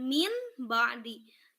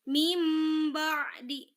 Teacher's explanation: Jadi apabila nun mati bertemu ba, dia nun matinya akan berubah menjadi huruf mim. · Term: iqlab